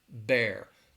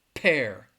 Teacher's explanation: you'll feel a little bit of air with the B sound but when you say that pair you should feel the air hitting your hands